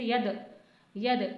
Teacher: دال جو ہے حروف قلقلہ میں سے اس لیے قلقلہ کرنا ہے